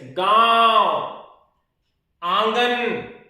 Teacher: प्रश्न बनता है अनुनासिक क्या है, अनुनासिक, तो अनुनासिक ऐसा वर्ण जिनके उच्चारण से हवा मुंह तथा नाक दोनों से, हवा मुख तथा नाक दोनों से निकले